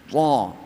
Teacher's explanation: Jadi ta itu punya sifat itbaq tebal. Ta punya sifat isti'la.